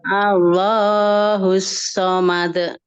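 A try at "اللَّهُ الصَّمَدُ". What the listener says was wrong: Nah, ditebalkan lafaz Allahnya, Bu. Allah dihentakkan ya.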